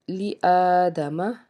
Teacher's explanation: کھڑا زبر ہے، 1 الف کے برابر یا 2 حرکات کے برابر اس کو کھینچ کے ادا کریں گے